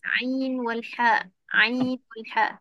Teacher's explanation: Tengah halkum cekik sikit iaitu huruf ain dan ha.